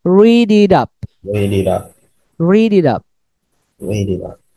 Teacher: T karena di tengah kata berarti jadinya dibacanya soft D